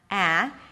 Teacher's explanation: esse som do cat é uma mistura do A e do E. Não é exatamente um E, não é exatamente um A, é entre os dois